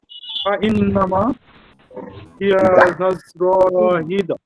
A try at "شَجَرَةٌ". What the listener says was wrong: হ্যাঁ ঝাজরাতু, এই যে র টানটা হলো, এটা হবে না, ঝাজরাতু, রাতু